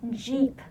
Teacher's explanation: when you pronounce that J in Jeep your lips are rounded